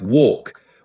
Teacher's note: In British English, it's pronounced with a more open o sound like walk, whereas in American English, it's closer to walk with a slightly different vowel quality.